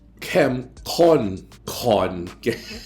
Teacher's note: the first kon is done with an unaspirated K, and the second kon is done with an aspirated K, like that.